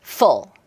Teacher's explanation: 소리가 퉁하고 떨어지지 굴절되지 않아요. fall 자, 그다음에 두 번째 사운드인요 사운드는요? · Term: 직선 사운드